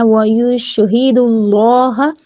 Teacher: شین کی جو تفشی ہے اس کو اچھے سے واضح کریں گے